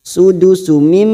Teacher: ada mim yang bertasdid ghunah musyaddadah kita dengungkan dan ditahan selama tiga harakat